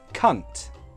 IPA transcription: kʌnt